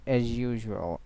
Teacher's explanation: As usual, is as and usual. So combination of the j sound will be applied here between them. So it will be pronounced as usual, not as usual.